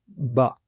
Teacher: इसका मखरज है शाइन the inner parts of the lips कि होठों के अंदर वाले हिस्सों को आपस में मिलाने से हर्फ ब की आवाज अदा होती है